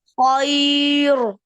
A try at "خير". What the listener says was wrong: नहीं, वक़फ की सूरत में बारीक.